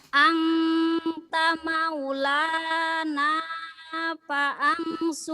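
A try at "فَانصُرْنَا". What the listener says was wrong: Paang nggak ada paang, pangsurna, alifnya nggak dibaca, nggak ada alif. Nggak ada alif. Ayo, pangsur. Bukan paang, di sini nggak ada alifnya, nggak ada barisnya. pangsur.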